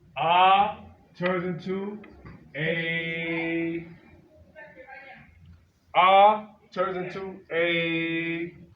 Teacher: Any letter that has Fata, followed by Ya Sukun. Ah turns into A. Ah turns into A. 2 beats.